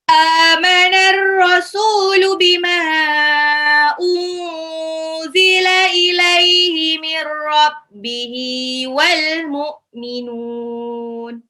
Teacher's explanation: Amana, alifnya matabai 2 harokat, rasulu sinnya 2 harokat matabai, bima unzila mimnya mimnya itu harokat alis bertemu dengan alif ya.